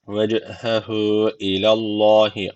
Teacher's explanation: Allah lafzı kalın okunacak çünkü öncesine karşı üstten bağlanıyor.